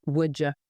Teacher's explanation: a D colliding with a Y, would you naturally becomes woulda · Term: assimilation